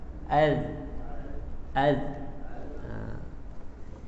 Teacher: Huruf zal, ujung lidah pada ujung gigi kecil atas.